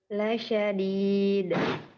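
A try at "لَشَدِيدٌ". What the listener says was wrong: Itu lebih jelas, Bu, ya. Barusan tidak ada. Lasyadid. Jadi tidak ada, ya. Qalqalahnya diperjelas lagi.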